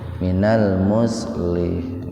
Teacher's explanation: Kalau mau berhenti di situ huruf h-nya dibaca sukun.